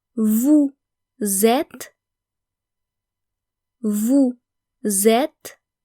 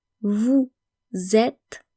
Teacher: notice the liaison between vous and êtes, vous êtes, because êtes starts with a vowel.